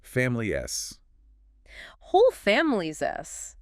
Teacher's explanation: the word is, at the very end of that phrase, often takes on a clear Z sound, especially as it links smoothly from the I sound at the end of family. So family-s.